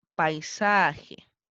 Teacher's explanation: se forma un diptongo vocal abierta y vocal cerrada como paisaje